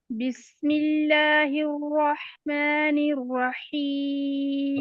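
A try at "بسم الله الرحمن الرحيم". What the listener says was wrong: را کو موٹا پڑھنے،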